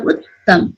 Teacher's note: यहाँ 2 झड्कामा उच्चारण भएको छ